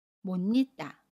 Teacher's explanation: 받침 시옷은 받침소리 니은으로, 모음 이는 니은을 첨가해서 니로 발음합니다. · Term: 니은 첨가